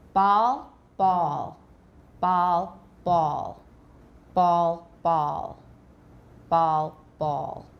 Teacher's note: There's more rounding with ball, A-W.